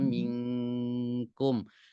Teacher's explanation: Minkum itu benar-benar nempel pangkal lidah tuh dengan di atasnya.